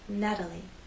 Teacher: the t having very quick light contact